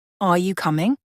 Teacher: Your voice goes up at the end of the sentence. We use this in yes/no questions or when we're unsure. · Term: rising intonation